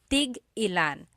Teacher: So tig ilan, when there's a hyphen in it, you have to have that glottal stop.